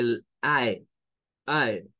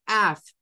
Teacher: usted tiene que hacer la apertura de la a y el cierre de la e al mismo tiempo por eso es que se escucha muy diferente a solo pronunciar